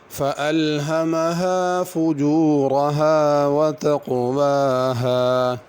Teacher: فَأَلْهَمَهَا فُجُورَهَا وَتَقْوَاهَا، یہ چھوٹی ہا ہیں ساری، ان کو چھوٹی ہا ہی ادا کرنا ہے۔ فجورہ کے را کو پر کرنا ہے، تقویٰ کے قاف کو بھی پر کرنا ہے